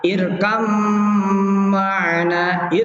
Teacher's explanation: Dalam wahuna di sini wahuna al-harfani, di sini 2 huruf yang mutajanisen, yaitu ba dengan mim, hukmuhuma, kedua hukumnya dari kedua huruf itu al-idghamul kamil, idgham sempurna bi gunnah, dengan adanya gunnah, dibaca gunnah · Ba-nya nggak ada karena kan udah diidghamkan kamil, di sini idghamnya kamil. Irkam ma'na, gitu. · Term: idgham kamil